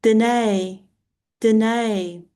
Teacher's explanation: It has an alpha, so an AE sound at the end, quite a long sort of vowel ending or 2 vowels joined together